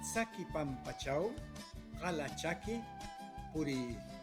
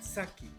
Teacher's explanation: El fonema C, que es fonema africado, alveolar, es característica del quechua ancashino. En otros dialectos quechuas ya no aparece.